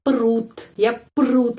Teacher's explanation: huruf o tidak diucapkan dia omit dihilangkan atau sebagai penggantinya kita mengucapkan e e pepet